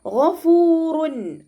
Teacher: തെൻവീനിന് ശേഷം ഇവിടെ ഇവഹാറിൻ്റെ ലെറ്ററായിട്ടുള്ള ഹ വന്നു. അപ്പോൾ തെൻവീനിലുള്ള നൂനിൻ്റെ സൗണ്ടിന് നമ്മളവിടെ വ്യക്തമായിട്ട് കേൾപ്പിക്കണം. ഗഫൂറുൻ, ശരിക്ക് നൂനിൻ്റെ സൗണ്ടിനെ വ്യക്തമായിട്ട് കേൾപ്പിക്കുക.